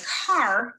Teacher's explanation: the quality of the a changes so dramatically that we consider our control vowels to be their own phoneme type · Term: r controlled vowel